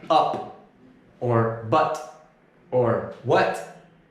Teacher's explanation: we've pushed this vowel up and back in the mouth a little bit to make the sound like up or but or what